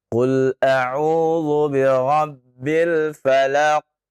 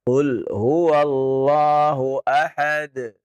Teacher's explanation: harusnya tidak perlu dia tahan karena tidak ada tasydid. Tapi dia lepas saja.